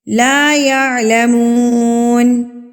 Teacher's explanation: اب جو ہم مثال پڑھ رہے ہیں وہ ہم پڑھ رہے ہیں یعلمون پہ، واؤ ساکن پہ. واؤ ساکن سے پہلے ہمارے پاس پیش ہے تو اس کا مطلب ہے کہ یہ واؤ مدہ ہے اور پیش والے حرف کو ہم نے ایک حرکت کے برابر کھینچ کے پڑھنا ہے